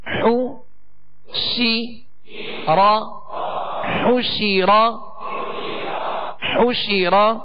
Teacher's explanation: زبر را پر ہے تو آواز اور منہ دونوں کھول کر اس کو ادا کریں. حو شی را حوشی را حوشی را.